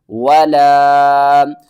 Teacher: ولا الف کے اوپر مد ہے، اس کو ہم نے 3 الف کے برابر کھینچنا ہے اور الف سے پہلے زبر بھی ہے، حروف مدہ ہے، تو